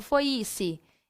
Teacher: Aí eu teria aqui, por exemplo, a letra I como uma semivogal, porque eu não falo foi-se, e sim foi-se. Então, o som do I quase que não é percebido.